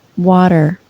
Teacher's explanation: the lips are rounded and the back of the tongue is raised up in the mouth